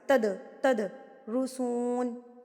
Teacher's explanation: فی الحال آپ نے اس کو قلقلہ کر کے پڑھنا ہے، اس کو ہلا کے پڑھنا ہے تھرتھراٹ سے